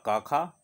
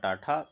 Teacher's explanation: इन ध्वनियों के उच्चारण में स्वर तंत्रिका में कंपन नहीं होता। अब आप बोल के अगर देखो तो आपको पता भी नहीं चलेगा कि गले के अंदर कुछ कंपन भी हुआ, और ये निकल जाते हैं। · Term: अघोष व्यंजन